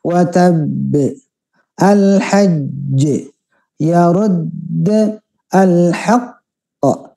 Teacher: kalau sudah tasdid ditahan dulu dua harakat baru dipantulkan